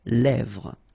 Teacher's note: it gives you the E, really open sound